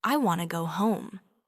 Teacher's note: In English, words often connect, like want to becomes wanna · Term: linking sounds